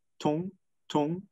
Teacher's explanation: it is a velar nasal which is a proper phoneme